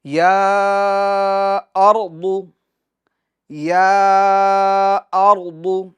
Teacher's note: کتنا کھینچتے ہیں؟ 2.5 الف کے مقدار تک ہم کھینچ کر پڑھتے ہیں۔ یا ارض، یا ارض، اچھا یہاں پر ناظرین ہم را کو پور بھی پڑھیں گے، کیونکہ ہم پیچھے قاعدہ تفخیم اور ترقیق کے سبق کے اندر پڑھ کر آئے ہیں کہ را ساکن سے پہلے والے حرف پر زبر یا پیش ہو تو را کو پور پڑھیں گے۔ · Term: مد منفصل